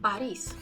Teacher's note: And this is a very common mispronunciation, especially for the native English speakers that I notice, that they would stress the first syllable instead of the second. And because the second syllable is stressed, the O is then pronounced as A